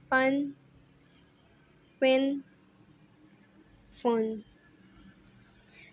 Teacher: فا جو ہے اوپر کے دانتوں کا کنارہ نچلے ہونٹ کے تر حصے سے ادا ہوتا ہے